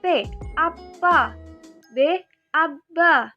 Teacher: cara artikulasinya, plosif atau letupan, serta tempat artikulasinya dibilabial